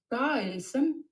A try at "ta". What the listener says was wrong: Non, alors le ta, pas du tout. J'ai entendu un nia, alors ça, c'est pas un nia non plus. Attention à la prononciation.